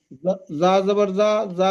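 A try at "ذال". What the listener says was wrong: ওটা যা নয়, জাল বলবেন, ওটা জাল। যা কিন্তু এইটাই আছে, এই দেখেন, এইটার নাম যা, আর এটার নাম জাল। জাল বলবেন।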